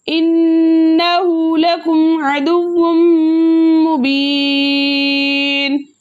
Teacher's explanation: اس کے علاوہ واو کے اوپر 2 پیش کی تنوین ہے اور 2 پیش کی تنوین کے بعد یہ نون کے متحرک حروفوں میں سے میم آ رہا ہے، تو ہم تنوین میں چھپے نون ساکن کو میم سے ملا کے اس طرح پڑھیں گے کہ دونوں ایک ساتھ مشدد ادا اور حرکتین مقدار غنہ بھی کریں گے، اور اس قاعدے کا نام ہوگا ادغام مال غنہ.